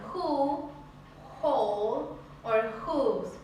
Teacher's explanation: Y algunos casos son who, whole or whose, por ejemplo. Entonces vamos a silenciar la W y vamos a hacerle fuerza al sonido de la H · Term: H pronunciada